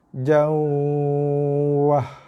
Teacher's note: Ja masuk dalam waw dengan bacaan yang lembut, ringan, nipis, sederhana, dengung, 2 harakat ataupun lebih. Jawah. Bukannya dibaca dengan jauh.